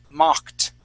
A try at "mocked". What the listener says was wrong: Now, I believe you pronounced your ED correctly, but that O, that O in the word is going to sound like an ah sound, okay? So, we're going to say mocked.